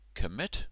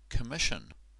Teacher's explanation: Commit ends in T, and when you add ion, it becomes sh, the kind of sh sound.